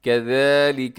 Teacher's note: ذال کا ساؤنڈ جو ہے اسے آپ نے سیٹی سے بچانا ہے